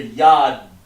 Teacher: So ya, and then you hear the da. You don't hear yada. You hear yad.